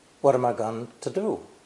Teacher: the ng simplifies to a single n sound which is easier